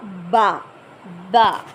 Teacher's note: یہ دونوں ہونٹوں کو آپس میں ملنے سے ادا ہوتا ہے، یعنی جب یہ آپس میں اٹیچ ہوں گے تو ہمارا با ادا ہوگا.